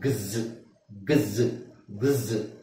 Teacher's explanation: ಜಿ plus Z ಎರಡೂ ಸೌಂಡ್ ಸೇರಿಸಿ ಅದರದ್ದು ಎಕ್ಸ್ ನ ಉಚ್ಚಾರಣೆ ಆಗುತ್ತೆ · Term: ಜಿ ಎಸ್ ಸೌಂಡ್